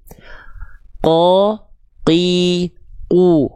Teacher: huruf qof itu kalau tepat dia dilafalkan dari pangkal lidah nempel ke langit-langit yang lunak saja maka dia akan keluar sifat yang akan kita highlight satu adalah jahr.